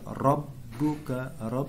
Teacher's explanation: Ini musyaddad. Cara bacanya dengan ditekan ya, tanpa mendengun.